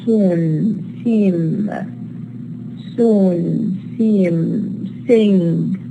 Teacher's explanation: they are nasalized whenever they occur in a position preceding nasal consonants, as in soon, seem, sing.